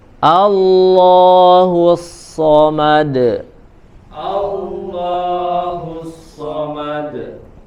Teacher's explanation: huruf A-nya dibaca tipis dulu, baru kemudian lafzul jalalahnya tebal